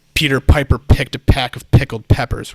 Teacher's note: there's a burst of air that is going to hit the microphone capsule and distort it a little bit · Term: plosive